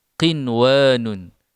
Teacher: Tanpa ada idgham dan tanpa ada dengung. Kerana kalimah ini hukumnya adalah izhar mutlak.